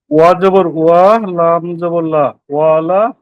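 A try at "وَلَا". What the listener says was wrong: তাড়াহুড়া করা যাবে না, একদম ধীরে সুস্থে ঠান্ডা মাথায়। ওয়াও জবর ওয়া, তারপরে এই যে একটা আলিফ আছে দেখছেন, আলিফটা মিলিয়ে পড়তে হবে। লাম আলিফ জবর, এই যে লাম আলিফ জবর লা, এটাও কিন্তু সেই আমাদের ছোটবেলার আদি সুর হয়ে গেছে, ওইভাবে না, সুন্দরভাবে লাম আলিফ জবর লা, ওয়ালা,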